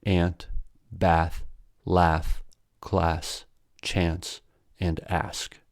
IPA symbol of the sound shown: æ